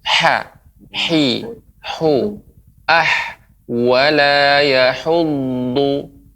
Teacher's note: Ya, pengucapan ha ya, pengucapan ha wala yahud ini ha kecil ya, dan ada aliran udara. Wala yahuddu, yahu dengan tadi terdengar seperti huruf seperti agak lebih besar, yahu, yahud, yahu, ha, hi, hu, wala yahuddu.